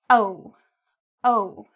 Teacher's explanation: Notice my lips are rounded. Okay, they come outward. Oh. They're not flat.